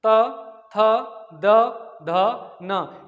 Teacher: आप बोल के देखेंगे, महसूस करेंगे हमारी जिह्वा दंत पे स्पर्श कर रही है। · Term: तावर्ग